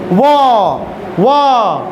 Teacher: दंत ओष्ठ, यानी दांत और ओष्ठ दोनों के मिल से व, दांत में भी सट रहा है और होठ में भी सट रहा है।